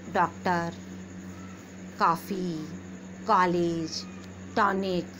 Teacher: न तो आ रहा है पूरा और न पूरा ओ आ रहा है, उसके बीच का प्रयोग होता है।